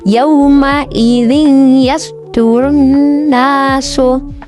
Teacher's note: Jadi suara kasrah tanwin ini dileburkan atau dimasukkan ke dalam huruf ya. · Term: idgham bihunnah